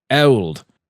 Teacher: he produces a really flat sound in the word old it sounds like ELD which is something I've typically heard Americans